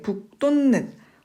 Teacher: 여기서는 지금 두 가지 이상의 음운 변동이 일어났는데 일단 이 앞에 나오는 받침 기역 때문에 뒤에 있는 디귿이 된 소리가 됐어요. 된 소리가 된 거 맞고 그 다음에 요 받침 디귿이 뒤에 나오는 이 니은 때문에 이 받침이 디귿에서 니은으로 바뀌는 거죠.